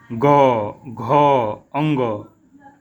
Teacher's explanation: जब ग हम बोलते हैं तो हमारी जो स्वर तंत्र हैं उनमें एक कंपन होता है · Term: घोस